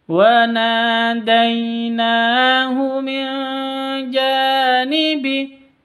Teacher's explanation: Non mati bertemu dengan jim. Cara bacanya samar didengungkan atau samar disertai dengung karena ikhfa hakiki